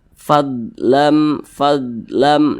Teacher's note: huruf huruf d itu bukan huruf Qalqalah jadi jangan dipantulkan